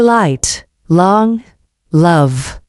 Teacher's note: The L sound is made with the tip of your tongue touching the roof of your mouth right behind your front teeth.